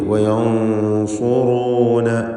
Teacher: വയൻസുറൂന റാഇന് ദമ്മ ആയതുകൊണ്ടാണ് തഫ്ഖീം ചെയ്യുന്നത്